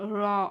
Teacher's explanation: இத வந்து வாயை குவித்து வாயை குவித்து நம்ம வந்து சொல்லணும் ரா அப்படின்னு இது வந்து ஓ சவுண்டு வரும் வரும்.